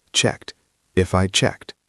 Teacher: Notice the pronunciation of checked. It ends in a t sound.